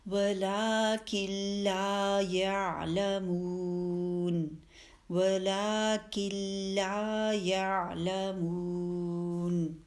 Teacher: اب یہاں دیکھیے وقف جب کیا ہے تو ولیکن نون کو پڑھا ہے ہم نے, جب آگے ملا رہے ہیں تو نون ساکن کا رول اپلائی ہوگا کیونکہ نون کے بعد لام آ گیا تو ادغام بغیر غنہ کے. اب کاف کو لام سے ملا دیں گے, نون بیچ میں نہیں پڑھا جا رہا, وہ تو مرج ہو گیا لام میں